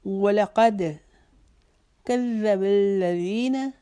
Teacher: زی کو ایک الف کے جتنا لمبا کریں گے، نا کو نہیں کھینچیں گے